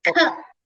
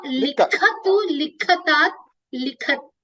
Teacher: The only change I will request is it is likha with a mahaprana khakarak.